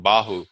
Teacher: To say ba and not make breath come up, put your hand in front of your mouth, and when I make the ba in bahu, I shouldn't feel breath coming out